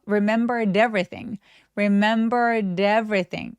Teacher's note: 드까지 소리 내고 에의 강세를 확실하게 주시면 훨씬 더 자연스러운 소리가 나죠. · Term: 연음